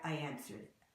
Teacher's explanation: you'd hear a very very light Y sound